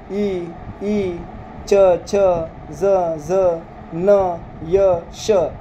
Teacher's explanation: यांचा उच्चार करताना आपल्या टाळूला स्पर्श होतो